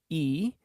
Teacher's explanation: the narrowest most forward focusing vowel